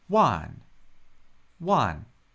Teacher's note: That's just a single syllable with a fourth tone.